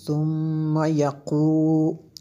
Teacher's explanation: دیکھیں اس پہ یہ جو میم شدد ہے میں نے غنہ کیا، ثم میم شدد ہے، یہاں پہ میم شدد ہے اس وجہ سے ہم نے غنہ کیا